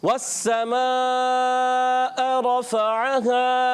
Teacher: हमज़ा चला जाता है। हमज़ा अदा करना है, वाज़े करना है, तसील नहीं करनी।